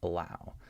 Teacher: So this word, in this word, I'm actually trying to make the short U sound, In this word, I'm just making this schwa sound as a result of reducing the syllable. I'm just trying to get through the syllable as fast as possible, and that's what creates the schwa sound